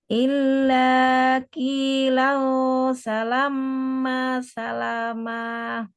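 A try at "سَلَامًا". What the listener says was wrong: Bukan salama, dia nggak ada tasdidnya ya, mimnya ya. Salama, salama. Hmm, kalau tadi yang pertama bacanya gini, salama, nggak salama tapi salama, salama. Ada ikhfanya.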